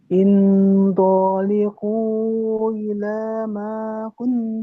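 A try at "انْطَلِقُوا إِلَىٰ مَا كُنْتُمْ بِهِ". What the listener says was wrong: tolikunya panjang. Intaliqu sambil diberikan 3 ketukan biar nanti ada ukuran Bu. Intaliqu ila ma.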